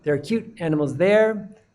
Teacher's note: The final there would be stressed, and you'd hear the full vowel sounds, but there are is going to have a shorter sound. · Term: weak form